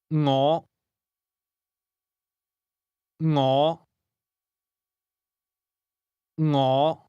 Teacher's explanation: This word begins with a soft ng sound, something like the end of the English word singing.